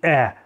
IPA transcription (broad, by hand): e